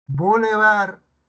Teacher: Al igual que requiem, palabra grave, terminada en consonante, está tildada. Boulevard, bar es palabra aguda, porque la sílaba tónica está en bar